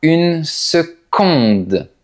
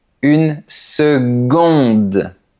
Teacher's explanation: La lettre C se prononce comme un G.